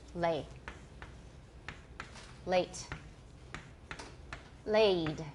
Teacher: you can hear very clearly that it's an AE it's a diphthong